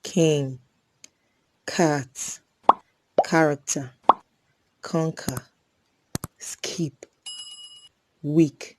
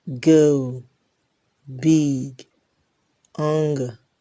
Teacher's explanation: K is a voiceless velar plosive and g is a voiced velar plosive. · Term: Velar Plosives